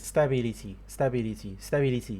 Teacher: He's giving all the syllables an equal prominence and equal level of stress, which is not even that high. They're all about a little bit low.